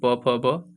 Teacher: जब प बोल रहे हैं तो आपका दोनों ओठ आपस में मिल रहे हैं। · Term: ओष्ठ